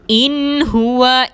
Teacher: نون ساکن کے بعد حروف حلقی میں سے ہا آ رہا ہے، نون کو ظاہر کر کے ادا کریں گے۔